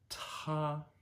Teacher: ta is t t breathing over the top of it a little more forcefully than we normally would